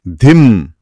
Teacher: మామూలు ధిం కాదు, కొంచెం గాలి రావాలి. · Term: ధా శబ్దం